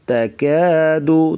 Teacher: تا اور کاف کو باریک پڑھیں گے